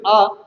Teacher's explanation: दीर्घ आ जिसका उच्चारण करने पर हमारा श्रीमुख हमारा ये जो मुख सर्वाधिक खुल जाता है ज्यादा खुल जाता है एक संख्या है वही दीर्घ आग विवृत